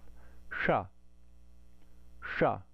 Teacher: I have to curl my tongue backward, bringing the tip of my tongue to the roof of my mouth. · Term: cerebral sibilant